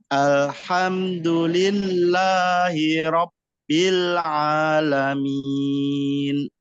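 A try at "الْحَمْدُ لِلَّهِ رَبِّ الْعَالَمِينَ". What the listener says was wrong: Masya Allah, bagus Pak ini.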